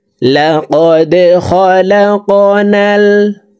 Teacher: দাল কলকলার হরফ নিচের দিকে ধাবিত করে ধাক্কা দিয়ে উচ্চারণ করব।